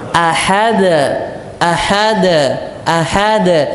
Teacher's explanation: gak dikecilkan karena ini termaksud dari Qalqalah Kubro Qalqalah yang besar